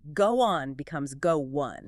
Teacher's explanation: Your mouth naturally inserts a little W or Y sound just to make it smoother.